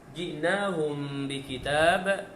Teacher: mim mati bertemu dengan ba, hukumnya ikhfa syafawi. Ikhfa syafawi, yang mana bacaan secara dengung.